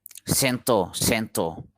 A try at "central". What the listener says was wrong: Not central, central. There's an R, cen, CEN, and then TR, TRA, and then L, central.